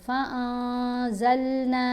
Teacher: قولاً غیر الذی قیل لهم فأنزلنا نون کے اوپر اخفا کریں گے، یعنی نون کی آواز کو ناک میں چھپا کر پڑھیں گے، واضح نون نہیں پڑھا جائے گا، فَأَنزَلْنَا نہیں پڑھیں گے، فَأَنزَلْنَا۔ ایک تو نون کی آواز کو ناک میں چھپا کر پڑھتے ہیں، دوسرا ایک حرکت کے برابر ٹھہر کر بھی اخفا کو ادا کیا جاتا ہے